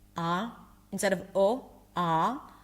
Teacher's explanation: Your tongue should be low and flat in the back, because if it's high, O, it's going to sound more like an O. Ah, ah. And then you have some examples here that you can play and practice with.